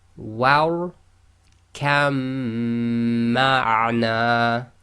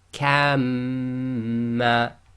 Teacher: So we ignore the ba, join the kaf directly to the mim.